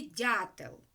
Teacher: А чому ж голосний а позначений буквою я тому що попередній приголосний звук м'який